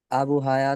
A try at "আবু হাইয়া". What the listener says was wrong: দেখুন, এই শব্দটা হচ্ছে আবু হাইয়া। আবু হাইয়া দেখতে পাচ্ছেন, যদি আপনি হায়া বলেন, নাম কিন্তু শুদ্ধ উচ্চারণ হলো আবু হাইয়া। আরবি থেকে আন আন আবি হাইয়া, তো কমপক্ষে বলতে হবে আবু হাইয়া।